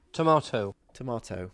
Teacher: So here we are losing the lengthening of the R with the northern accent.